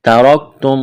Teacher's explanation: را کو موٹا کرنا ہے